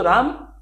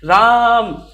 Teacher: लेकिन जब बहुत दूर इंसान खड़ा होगा, जब हम तेजी से चिल्लाएंगे तो आवाज़ आएगी राम। तो जब रा का वर्ड जो है थोड़ा सा और लंबे समय तक जा रहा है तो तब ये होता है हमारा प्लुत स्वर।